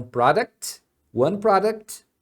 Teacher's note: pessoa falando products falar o t quando tá no plural Porém quando está no singular você fala product aí você não omite o t